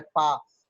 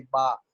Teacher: Voice पहला sound अमूमन voice less होता है, पा। और बा आप बोलेंगे तो वोकल कार्ड की वाइब्रेशन फील होगी, बा। फा बोलेंगे वॉइस लेस है, वाह बोलेंगे आपको वाइब्रेशन फील होगी, सा बोलेंगे वॉइस लेस है, जा बोलेंगे आपको वाइब्रेशन फील होगी।